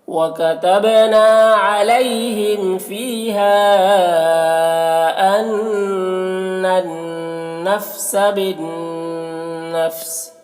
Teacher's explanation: नून मुशद्दद है, गुन्ना होगा